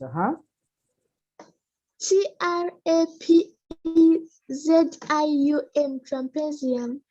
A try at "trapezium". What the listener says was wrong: No, it's not trumpet. There is no trumpet. It is a trapet. Trapet. There is no M or N that makes it be trumpet.